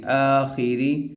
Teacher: خا کلرفل ہے اس لیے اس کو موٹا پڑھیں گے